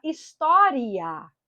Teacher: em vez de história, a pessoa pronunciar história, prolongando esse i